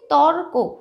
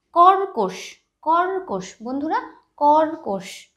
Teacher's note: রেফ যেই বর্ণের মাথায় আছে ঠিক তার আগের বর্ণে কিন্তু একটা রয়ের উচ্চারণ আসছে